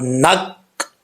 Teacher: آگے جو نون آ رہا ہے اس نون کو کاف سے جو ہے ملا کے پڑھنا ہے